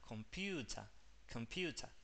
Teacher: como el sonido cae sobre el sonido de la U, se hace larga